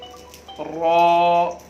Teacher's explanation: रॉ को अदा करते वक्त जो है ज़बान को घुमाना है और इसे मोटा पढ़ना है, पुर करके पढ़ना है।